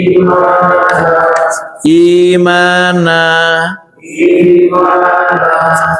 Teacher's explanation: yang mad badal ini panjangnya hanya dua harakat